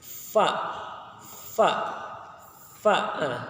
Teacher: Makharijul huruf dari huruf fa adalah perut bibir bawah dan ujung 2 gigi seri yang atas.